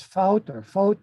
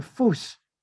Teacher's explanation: But in German, they replaced the T with the double S sound, which became Fuß.